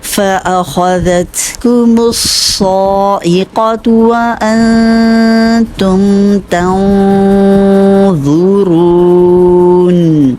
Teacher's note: وَأَنْتُمْ، یہاں اخفا کا رول ہے، نون کو آواز کو چھپائیں تاکہ مخرج کے قریب جا کے غنہ کرتے ہوئے، اور تنظرون، یہاں پہ ضا کے مخرج کے قریب جائیں گے، ضا چونکہ موٹا پڑا جانے والا حرف ہے تو اخفا کی آواز بھی موٹی ہوتی ہے۔ جب بھی نون ساکن یا تنوین کے بعد موٹا حرف آ جائے جس کو ہم موٹا پڑھتے ہیں، تو اس میں پھر اخفا کی آواز کو بھی موٹا کرنا ہوتا ہے۔